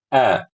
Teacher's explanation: Ketika baca a'udzu, a itu harus hamzah. A. Jangan sampai bacanya kayak ain.